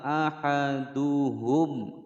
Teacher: mim sukun bertemu huruf lam dibaca dengan jelas, tidak boleh dipantulkan, tidak boleh didengungkan